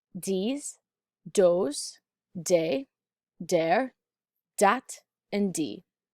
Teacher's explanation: a voiced th which can turn into a d sound now say these words with a light d at the tip